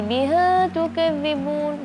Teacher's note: Jadi suaranya beralih ke hidung karena membuka mulutnya kurang sempurna.